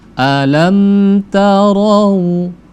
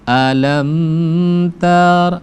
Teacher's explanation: Alam ta mim mati bertemu dengan ta itu izhar syafawi, enggak boleh lama-lama.